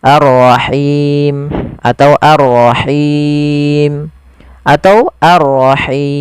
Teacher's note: Panjangnya boleh 2, 4 atau 6 harokat. Ar-Rahim atau Ar-Rahim atau Ar-Rahim. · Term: mad arid disukun